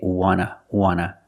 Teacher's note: And we see the T in want is an NT. So we don't pronounce the T and we say wanna